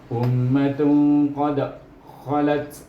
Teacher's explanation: Dal mati dalam satu ayat yang bersambung, melainkan kita wakaf kat sini, maka dia jadi qalqalah kubra. Tapi oleh kerana kita sambung dengan khalat, dia akan jadi qalqalah sughra.